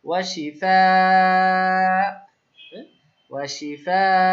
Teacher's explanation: শিফাউন, ওয়া শিফাউন আছে উন, তাহলে দুই পেশটা সাকিন হয়ে যাচ্ছে, সাকিনটা হচ্ছে হামজার উপরে, তাহলে কি হবে, হালকা একটু ধাক্কা হবে